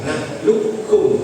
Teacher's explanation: Prakteknya ucap dulu nakhluqkum itu namanya idgham naqis. Kalau kita pakai idgham yang idgham kamil berarti jadi kaf. Nakhluqkum biasa, enggak usah main begitu.